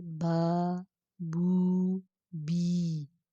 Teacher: الف ساکن سے پہلے زبر، واؤ ساکن سے پہلے پیش اور یا ساکن سے پہلے زیر ہو تو ایک الف کے برابر نرمی سے ان کو پڑھیں گے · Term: حروف مدہ